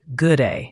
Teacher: the D at the end of good is often very light, almost swallowed, especially before another consonant like day. It's not good D day, but more like good.